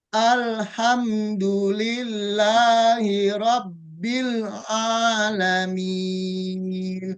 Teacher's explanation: Langsung ain. Lam langsung dilepas langsung ain ya